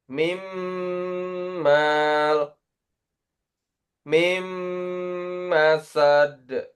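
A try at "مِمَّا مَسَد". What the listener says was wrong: Mim maknya jangan panjang, pendek. Mim masad.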